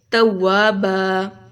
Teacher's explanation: مثال کے طور پر توابن، ٹھیک ہے، تو یہاں پر ہمارے پاس کیا ہے، دو زبر ہیں اینڈ پر، تو اس کو ہم الف مد کی طرح پڑھیں گے توابا، دو زبر اگر اینڈ پر ہوگی تو ہم اس کو وقف کی صورت میں توابا کر دیں گے، الف مد کی طرح پڑھیں گے۔ ایسے ہی ہدن، ہدا، ماءن، ماء، ٹھیک ہے، اس طریقے سے۔